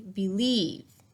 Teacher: Do I say believe or do I say believe? Yes, the accent is on the second syllable